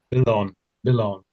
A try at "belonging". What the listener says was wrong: You're missing out the sort of the ng up here, sort of thing. So you're just saying belong, belong. It's not really saying the ng together. um, maybe miss off the s. Belonging, belonging. So you're not making the ng sounds really.